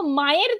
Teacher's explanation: পাশাপাশি দুটো ধ্বনি একসাথে যুক্ত হয়ে মাঝখানে অতিরিক্ত ব্যঞ্জন আমরা একটা উচ্চারণ করে ফেলছি। এইটাকেই বলা হচ্ছে শ্রুতি ধ্বনি।